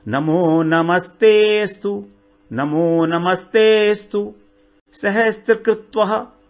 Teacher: नमस्ते थोड़ा सा खींचेंगे ना जब त को ते को, तो अ अपने आप आ जाएगा।